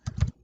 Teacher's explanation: la sílaba tónica está una antes de la antepenúltima esta última penúltima antepenúltima y esta es una antes de la